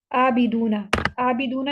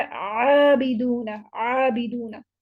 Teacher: جب بھی آئین آئے تو آئین اگر ہم اس کو سمپل ادا کریں گے تو پھر وہ حمزہ ادا ہوگا. آئین کو ادا کرنے کے لیے پھر ہمیں تھوڑی سی محنت کرنی پڑے گی.